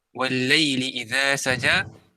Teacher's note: idza ni dibaca panjang dua harakat kerana dia adalah mad asli